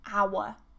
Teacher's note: And remember, we're British, we don't pronounce the R.